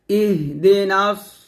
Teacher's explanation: সি হবে না সিনের মত হবে না সদ মোটা করে হবে